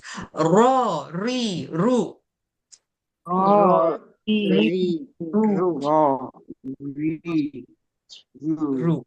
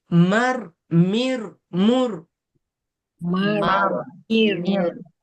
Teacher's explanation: Cuma ra ni dia ada sifat bergetar. Takrir nama dia.